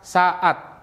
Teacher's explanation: bunyi glotal adalah pemisahan antara dua huruf a dalam kata saat · ketika pita suara sangat rapat sehingga menghentikan aliran udara dari paru-paru Ini menghasilkan bunyi glotal atau Hamzah contohnya pada bunyi glotal adalah pemisahan antara dua huruf a dalam